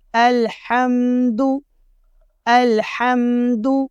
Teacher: دال کے اوپر ہمارے دونوں ہونٹ گول ہو جائیں گے · الحمد، حمزہ کو لام سے ملائیں گے، ہا کو باریک پڑھنا ہے، ہا نہیں پڑھنا۔